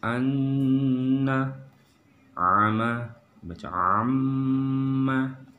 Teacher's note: tahan 2 harakat dan sambil agak berdengung seperti itu